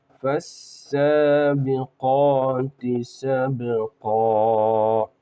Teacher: یہاں پر بھی فا ڈائریکٹ سین سے پڑھیں گے، الف اور لام کو یہاں پر بھی نہیں پڑھیں